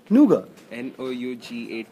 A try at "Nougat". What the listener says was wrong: The T is silent.